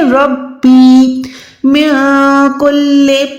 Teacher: نون ساکن کے بعد جب بھی کاف آتا ہے تو ہم نے وہاں پر نون کو چھپانا ہے، وہاں پر اخفا کرنا ہے.